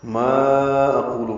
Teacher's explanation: ما کو 4 حرکات لمبا کریں گے، یہ مد منفصل ہے، الف مدہ کے بعد آگے دوسرے کلمے میں حمزہ آ رہا ہے.